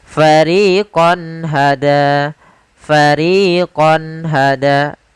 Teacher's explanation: suara qonnya harus jelas tidak boleh ditahan dengan gunna karena izhar adalah menjelaskan menampakkan suara nun sukun dan tanwin dengan